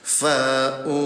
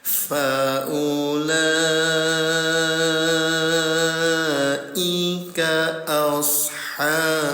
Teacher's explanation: cara bacanya bunyi lam yang ada tanda alisnya dipanjangkan selama 5 harokat atau diketuk 5 kali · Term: mad wajib mutasil